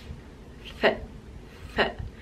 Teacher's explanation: The next sound is unvoiced and it's f, f, f. So using the top teeth with the bottom lip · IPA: /f/